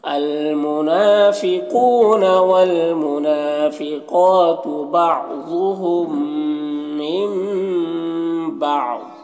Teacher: نون کو میم سے بدل کر غنہ اور اخفا کے ساتھ پڑھیں گے، اس کو اقلاب کہتے ہیں۔